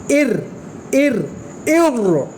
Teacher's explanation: را زیر کے ساتھ آواز جو را کی پیدا ہوگی وہ باریک ادا کریں گے۔